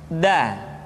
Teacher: Da diucapkan dengan menyentuhkan ujung lidah kita dengan bagian gusi-gusi dua gigi seri bagian atas. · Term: huruf da